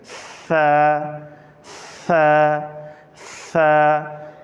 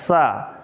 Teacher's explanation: تو ثا کو ہم نے سین سے فرق کرنا ہے۔ ثا ادا کرتے وقت زبان کا جو کنارہ ہے اس کو دانتوں سے باہر نکال کے پڑھنا ہے